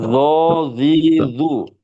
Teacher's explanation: ujung lidah nempel pada ujung gigi depan atas ketika pengucapan dho